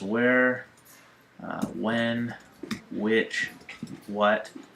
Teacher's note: well, I don't pronounce the H in those.